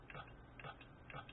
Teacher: that's a good puff for the p